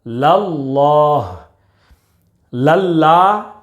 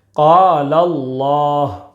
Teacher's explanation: لفظ اللہ کے لام سے پہلے زبر ہے، اس لیے لفظ اللہ کے لام کو پر یعنی موٹا پڑھیں گے۔